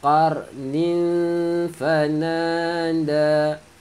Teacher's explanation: Qarnin tanwin bertemu dengan fa, dengung sembunyikan bunyi tanwin.